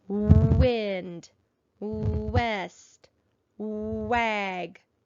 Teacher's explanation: We hear a w sound in the initial position of each of these words.